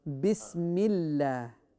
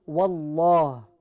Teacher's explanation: the tongue is touching the upper palate and it is full mouth